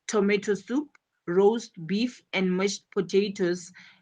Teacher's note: the stress syllable falls on the second word in each phrase